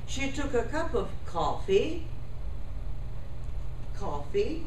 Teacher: there is a pitch on the focus then I use a pause and then I continue